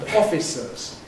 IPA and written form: ˈɒfɪsəz (officers)